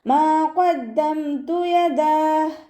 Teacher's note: ത കൽക്കലയുടെ ലെറ്ററില്ലാത്തത് കൊണ്ട് ഹാഫ് സുക്കൂന് കൊടുക്കുക. താക്ക് സുക്കൂനാവുമ്പോൾ കുറച്ച് എയർ പാസ് ചെയ്യണ സൗണ്ട് കൊടുക്കണം